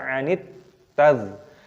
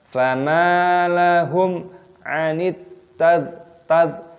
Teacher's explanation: Di sini ada alif lam samsiyah, ada tak yang berharokat tasdid, maka dimasukkan, diidghamkan, dibaca anit tadh.